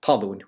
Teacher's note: it was probably talún with stress on the first syllable